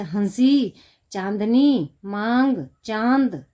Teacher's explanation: इसका उच्चारण करते समय हवा नाक और मुख से समान दबाव के साथ बाहर निकलती है। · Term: अनुनासिक